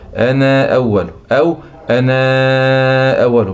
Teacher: يثبت قالون ألف أنا الواقعة قبل همزة قطع، لما يكون جاي بعدها همزة قطع، بشرط إن همزة القطع تكون مفتوحة أو مضمومة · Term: المد المنفصل